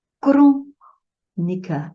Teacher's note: Crônica, a antepenúltima que está sendo acentuada